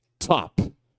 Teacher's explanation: Ele parece que o t explode